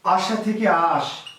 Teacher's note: কোন স্বরলোপ, শেষ থেকে লোপ পেয়েছে, এর নাম হচ্ছে অন্ত স্বরলোপ